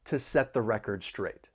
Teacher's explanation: There are some overlapping sounds with the final stop T in set and the voice TH in the.